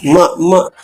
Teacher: ಮ ಜೊತೆಗೆ ಮೂಗು ಕೂಡ ತರಂಗವನ್ನು ಸೃಷ್ಟಿ ಮಾಡುತ್ತೆ